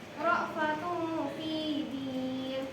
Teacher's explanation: Karena kasrah tan bertemu dengan huruf fa, maka dibaca samar. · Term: ifa